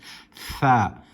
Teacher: The tha is pronounced with the tip of the tongue touching the upper incisors, the upper teeth, the upper incisors.